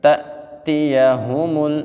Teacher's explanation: جب الف کے اوپر جزم آ جائے تو حمزہ بن جاتا ہے، تو جزم والے حمزہ کو ہم سختی کے ساتھ جھٹکا دے کے پڑھتے ہیں